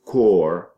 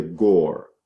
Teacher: So that sound becomes pre-vocalic. And you take the sound that is voiceless and coming before a vowel, you make that voiceless sound into a voiced sound.